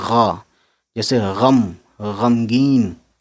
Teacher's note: غین کی آواز جو ہے حلق سے ہوا پھنسا کے نکالتے ہیں، ایک ہوتا ہے گا ایک ہوتا ہے غا، جیسے غم غمگین، ٹھیک ہے، اس طریقے سے افغانی۔